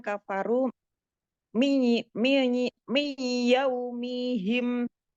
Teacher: ada nun sukun bertemu dengan ya idgham bi gunah, ini didengungkan